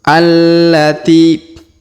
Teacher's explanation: Huruf ti kita panjangkan 2 harokat karena di depannya terdapat ya sukun.